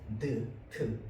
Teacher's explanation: 트는요 어디에서 나는 소리냐면 혀 끝이 윗 잇몸까지 왔다 가는 소리입니다. 트 맞죠? 혀 끝이 앞에까지 나갔다 들어와야 돼요.